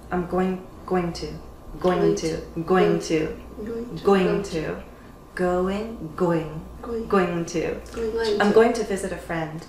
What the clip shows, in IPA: goɪŋ